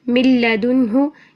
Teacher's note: نون کو نہیں پڑھیں گے کیونکہ نون کا جو غننے والی صفت بھی ہے وہ بھی ختم ہو گئی ہے، پوری طرح تام ہو گیا، مکمل طور پر مدغم فی میں داخل ہو گیا۔ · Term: ادغام